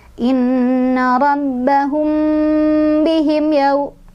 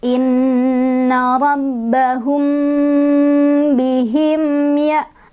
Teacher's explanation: Jadi tetap satu ketukan aja mimnya, rapetin lagi bibirnya. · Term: izhar syafawi